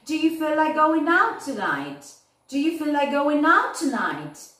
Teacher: Para arriba va la entonación. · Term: Rising intonation